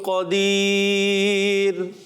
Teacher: قدیر کی راہ کو ہم نے باریک رکھنا ہے